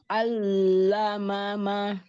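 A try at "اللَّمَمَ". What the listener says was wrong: Lebar lagi lam makhrajnya.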